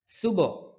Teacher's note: হা কণ্ঠনালীর মধ্যখান থেকে উচ্চারণ হয় হা এক আলিফ টানতে হবে নাকাল্লাহ এখানে কাল্লা কাল্লা মোটা করে